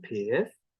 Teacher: which you'll notice I'm pronouncing with a slightly rising intonation